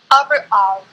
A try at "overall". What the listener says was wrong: So over. Lagyan mo ang W. Over. And then all.